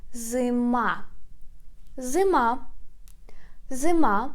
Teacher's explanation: pay attention that we put stress on the last syllable on i